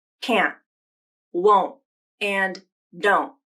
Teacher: you might use a glottal stop is in the place of a T sound in contractions that contain the N''T combination · native speakers will often use a stop T instead. This can occur in all contractions that use an N''T combination.